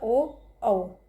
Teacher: ओ और औ में कंठ और ओष्ठ का, मतलब गले का और होठों का प्रयोग होता है।